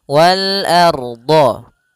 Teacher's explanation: A tipis, ro-nya tebal.